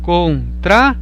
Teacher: o O é pronunciado mais alto. Então seria um exemplo de ditongo crescente.